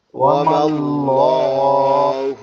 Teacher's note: ল একটু মোটা হবে, ঠিক আছে, লা হবে কিন্তু মোটা হবে।